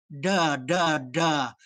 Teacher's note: In English, we say a D with the tip of our tongue at the front of our mouth. Klingons say it with the tip of their tongue up in the roof of their mouth.